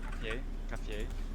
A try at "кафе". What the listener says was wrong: Ну, у тебя по-английски все хорошо получается, а вот именно в русском языке ты эти звуки почему-то ты их делаешь очень мягкими.